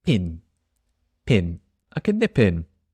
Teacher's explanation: because we're speaking quickly, I can nip in. The P joins the next word.